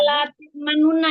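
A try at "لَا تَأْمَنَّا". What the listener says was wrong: Ada manu tapi nu-nya itu sebentar saja. Jadi bacaan nu-nya sebentar. Jadi boleh yang dilapalkan domahnya, tapi hanya beberapa 1/4 ketukan gitu. 1/4 ketukan. Jadi sedikit saja.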